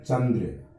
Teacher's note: चंद्र बोलते हैं तो न की ध्वनि है, नासिक के वर्ण है वो पूरी नाक से निकल जाती है